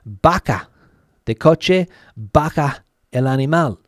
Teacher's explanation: people don't differentiate between the V and the B